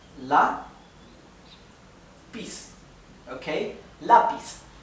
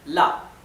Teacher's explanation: it's grave, right? Because the accent is in la.